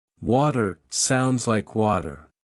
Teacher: Master the flap T. In American English, the T sound between vowels often turns into a soft D sound.